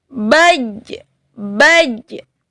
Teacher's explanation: Kalau dia sukun maka menjadi kholkhola, yaitu mempunyai pantulan.